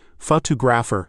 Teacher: Feel that second syllable pop out.